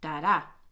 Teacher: We have iambic meter, unstressed beat, followed by a stressed beat